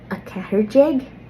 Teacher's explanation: with a catter jeg, I didn't do like a really obvious slender R